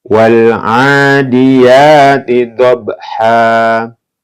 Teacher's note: Ha bukan dhabhan, tapi ketika diwakafkan menjadi dhabha.